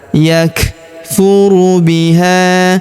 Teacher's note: Huruf kaf berharakat sukun. Kita berikan hembusan.